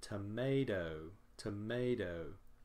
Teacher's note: We have a stressed syllable in the middle